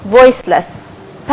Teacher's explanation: the upper lips it is pressed against the lower lips so we will have the bilabial sound